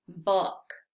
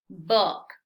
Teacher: este sonido es menos redondeado es decir la boca la vas a poner menos redondeada y vas a abrir un poquito más la boca